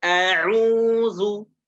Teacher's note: Tenggorokan paling bawah. Hamzah itu keluar dari pangkal tenggorokan. Dan dia huruf yang tipis, tidak boleh ditebalkan. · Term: huruf hamzah